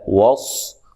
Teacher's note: صاد کو موٹا ادا کرنا ہے